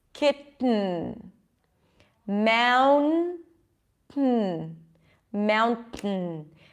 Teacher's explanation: stopping the air somehow when it comes to the tea so I'm bringing the tongue up kit but then I'm releasing the air through my nose